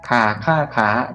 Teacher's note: เติมไม้เอกแล้วเสียงเป็นยังไงครับสูงขึ้นหรือว่าต่ำลงสูงขึ้นนะ